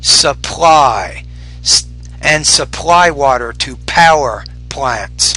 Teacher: you want to make sure you pronounce the p with more air